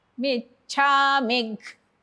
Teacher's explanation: जिभेचा मधला भाग वरती टेकवायचा टाळ्याला